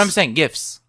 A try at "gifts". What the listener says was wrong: You're saying you're missing the T. Gifts. I thought it was GIF.